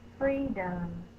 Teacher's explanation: free is the stress or accented syllable